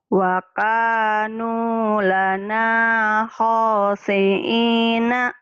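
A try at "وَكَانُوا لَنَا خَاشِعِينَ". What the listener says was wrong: Bisa, shinnya nggak keluar. Wa kanu lana khashi'ina. Shinnya ya. Panjang. Wa kanu. Shinnya hutangnya khashi'in. Shin.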